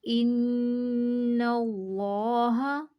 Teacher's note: ہم نے اللہ کے لام کو پر پڑھا، اسم جلالہ اللہ کے لام کو ہم نے پر پڑھا کیونکہ اسم جلالہ اللہ کے لام سے پہلے والے حرف کے اوپر زبر تھی۔